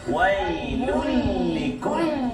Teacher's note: Tanwin bertemu dengan lam. Kita tak dengungkan bacaan kita. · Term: Idgham bila gunna